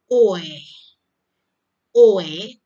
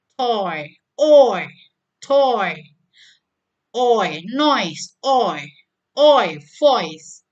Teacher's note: Front of tongue starts down and moves up. Jadi lidah bagian oi, lidah bagian atas itu turun, ya. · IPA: ɔɪ